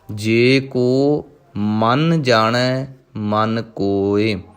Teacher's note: ਪਹਿਲਾ ਮਨ ਜੋ ਮੰਮੇ ਉੱਪਰ ਟਿੱਪੀ ਲੱਗੀ ਹੋਈ ਹੈ, ਇਸ ਕਰਕੇ ਥੋੜ੍ਹਾ ਜਿਹਾ ਕੱਸ ਕੇ ਬੋਲਣਾ ਹੈ। ਦੂਜੇ ਮਨ ਦੇ ਉੱਪਰ ਟਿੱਪੀ ਨਹੀਂ ਲੱਗੀ, ਉਹਨੂੰ ਥੋੜ੍ਹਾ ਜਿਹਾ ਪੋਲਾ।